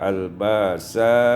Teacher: Pada ayat 177, al-ba'sa'i, ibdalul hamzah alifan, ditukar hamzah dengan alif